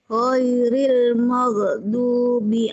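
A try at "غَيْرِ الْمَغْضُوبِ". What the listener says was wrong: Ghairil maghdubi, jangan magho ya, jangan dikol-kolahin ya. Ditahan. Maghdubi.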